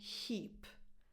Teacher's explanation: A strong H sound and then a tense [i] as in the word “eat”